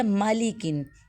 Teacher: میم کو ہم مخرج سے ادا کریں گے یعنی دونوں ہونٹوں کا جو خشک حصہ ہے اس کو آپس میں جوائن کریں گے. لام کو ہم باریک پڑھیں گے.